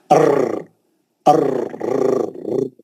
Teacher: रा जो है हुरूफ तकरार है, उसके अंदर एक किस्म की तकरार है, अर्र अर्र, जो एक किस्म का जो आवाज उसका टकरा के रिपीट होता, उसको बोलते तकरार, हुरूफ तकरार है ये।